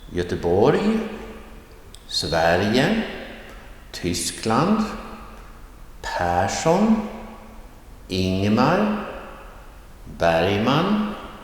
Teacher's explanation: So place names and person names often have this rising tone, accent 1.